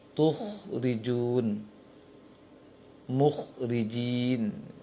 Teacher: Dan dia sifatnya rakhawah, bukan syiddah. Karena itu ketika kha sukun, dia ada aliran suara dan nafas.